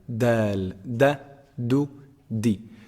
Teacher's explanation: The top of the tongue hits the upper incisors, the roots of the upper incisors.